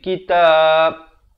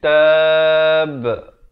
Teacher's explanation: Kalau nak waqaf, ba ni diberikan tanda mati mendatang. Dan diberikan pantulan. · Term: khalkhalah kubra